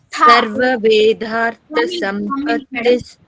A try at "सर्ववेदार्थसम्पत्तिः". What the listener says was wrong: Vedartha tha is Mahaprana andi.